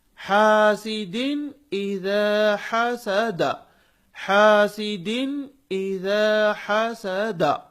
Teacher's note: دال پر تنوین ہے، ہم اس کی آواز کو ظاہر کر کے پڑھ رہے ہیں، کیوں؟ اس لیے کہ اس کے بعد حمزہ ہے اور وہ حمزہ حروف حلقی میں سے ہے۔